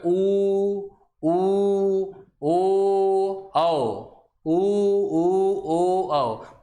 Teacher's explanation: ये 4 वर्ण हैं जिनके उच्चारण में होंठ गोलाकार आकृति बनाते हैं